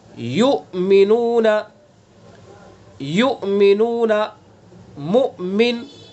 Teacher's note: हमज़ा साकिन है, हमज़ा के ऊपर सुकून है और इसके अंदर झटका लगाया जा रहा है, झटके से पढ़ा जा रहा है। युमिनूना, अगर झटका इसके अंदर हमने पैदा नहीं किया तो फिर ये इसके अंदर इब्दाल हो जाएगा, हमज़ा नहीं रहेगा, वो युमिनूना हो जाएगा, हमज़ा हज़फ हो जाएगा।